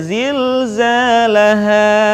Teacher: Ingat, tidak boleh kepanjangan zilzalaha. Cukup diayun saja zilzalaha.